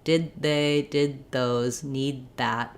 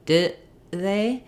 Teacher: Did they? I'm stopping the air and not letting that D out, and I'm just releasing the air again when I get to the TH sound.